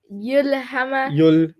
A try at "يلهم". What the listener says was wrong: Mu. Then why are you saying yulhima?